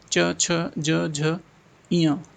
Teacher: च वर्ग क्या होता है च छ ज झ ञ तालभ्य से आता है